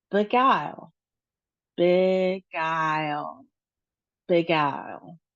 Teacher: The next one is just two syllables and we realize we have a short I sound, so bi and then we have a long I sound, guile